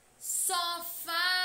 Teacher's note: A sílaba fá é a mais intensa, é a que demora mais a ser pronunciada. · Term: sílaba tônica